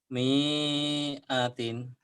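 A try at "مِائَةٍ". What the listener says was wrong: Pendek. Miatin. Gak ada yang panjang. Bukan pasangan ya. Miatin.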